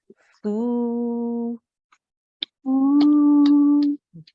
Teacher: The fa has an inverted dhamma, which will take this sound for 2 seconds.